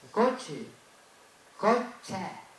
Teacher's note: Eso es una E abierta, que no existe en castellano.